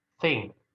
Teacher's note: Dan untuk yang sesuatu itu thing, eng aja, nggak ada k-nya.